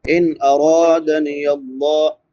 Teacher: لفظ اللہ باریک پڑھا جائے گا کیونکہ لفظ اللہ سے پہلے زیر ہے۔ ان نون ساکن کے بعد حروف حلقی میں سے حمزہ ہے تو یہاں پہ اظہار ہوگا۔